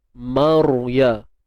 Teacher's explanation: Ra mati sebelumnya baris atas. Jadi kita kena tebalkan ra. Angkat pangkal lidah kita.